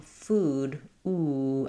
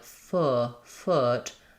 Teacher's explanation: And the difference here in is that my tongue is a little bit lower and my lips are not quite as pursed. So when I'm saying food, ooh, I'm really round and high. When I'm saying like foot, I do still have some lip rounding, but my tongue is lower.